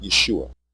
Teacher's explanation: word is not Yeshua it is yuai with pure vowel sounds the pronunciation Yeshua has two degraded vowels a short e and a long u the e is a contraction of the a vowel and the